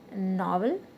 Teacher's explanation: novel the stress is on the first syllable